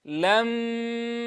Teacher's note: الغنة أكمل ما تكون في النون والميم المشددتين والمدغمتين، لذا زمنها هنا أطول ما تكون